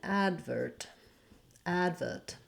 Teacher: they do stress that first syllable in the two-syllable version of advert